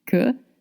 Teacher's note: We don't say que, we said que, the schwa sound. Que, same sound as away or about.